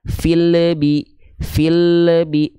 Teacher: tahunya memantul itu terindikasi pada ujung pelafalan lam sukunnya terdapat bunyi e